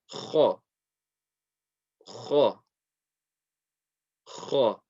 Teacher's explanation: Okay, we're still saying the sound of the fatha, which is the sound, but we're putting that heavy quality, meaning we're raising the back end of our tongue. We're slowly releasing the sound, we're rounding our mouth, we're doing those things with the heavy letters.